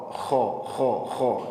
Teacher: Wala khaufun, jadi ini huruf tebal, maka bunyinya masuk ke vokal o